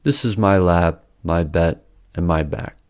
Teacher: the vowel length of words with originally voiced consonants is noticeably longer even though their final voiced consonants are devoiced. So “This is my lab, my bed, and my bag” will sound like “This is my la-ap, my be-et, and my ba-ack. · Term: Devoicing